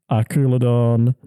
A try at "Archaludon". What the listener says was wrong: Is there even a U there? A-R-C-H? I don't think it's a U. A-R-C-H-A-L-U-D-O-N.